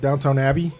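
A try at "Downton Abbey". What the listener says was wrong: I'm not, and it's pronounced Downton, not downtown. It's Downton.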